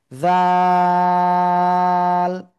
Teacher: এরপরে সর্বশেষ যে অক্ষরটা শিখেছি সে অক্ষরে এটা, জিহ্বার আগা উপরে 2 দাঁতের আগায় লাগাবো, লাগিয়ে নরম করে আমরা এই অক্ষরটা উচ্চারণ করব 3 আলিফটা নিয়ে।